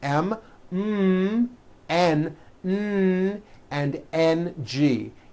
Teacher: closing off your nose you see you cannot do it because the M sound comes out of your nose it's a nasal sound same thing with the NG